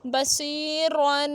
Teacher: را پہ زبر ہے تو را کو موٹا کر کے پڑھیں گے، تنوین ہے تو غنہ کریں گے